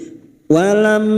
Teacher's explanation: mim sukun dibaca jelas tanpa mendengung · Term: Idhar syafawi